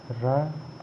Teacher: र प्रकंपित व्यंजन या लुंठित व्यंजन कहते हैं।